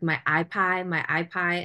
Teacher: the final consonant of the word is essentially being chopped off and that's called that's a phological process called final consonant deletion